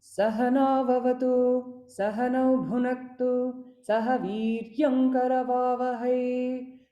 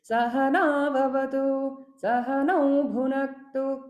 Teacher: This is evenness, not going up and down too much. · that evenness of tone is called as sama, that must be maintained in chanting.